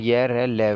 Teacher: यह तालव्य से बोला जाता है, रै मूर्धन्य से बोला जाता है, लै दंत्य से बोला जाता है, वै दंत ओष्ठ्य से बोला जाता है। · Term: अंतस्थ व्यंजन